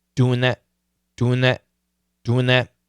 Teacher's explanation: the N is a strong sound it can kill the th which is a weak sound